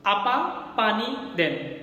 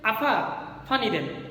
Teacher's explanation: তাহলে আফা ফানি দেন, দেখো আফা বললা, তুমি প্রথমে উচ্চারণটা ভুল করেছো। হওয়ার কথা ছিল আপা, প হওয়ার কথা ছিল, সেখানে তুমি উচ্চারণ করেছো ফ।